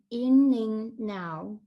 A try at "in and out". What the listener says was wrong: Oh, get that ending sound. In and out.